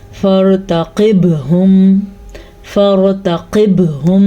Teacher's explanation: اب میں نے یہاں پہ را کو پر پڑھا کیونکہ را ساکن ہے اور پیچھے والے حرف پہ زبر ہے، اس لیے را کو پر پڑھا، الف پڑھا ہی نہیں جائے گا، فا اور را آپس میں جڑ جائیں گے۔